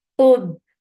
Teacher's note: for dhamma circle lips and make qaf heavy. And attach it ba.